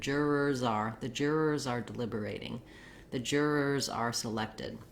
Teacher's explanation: you can think about that Z sound kind of almost being on the R word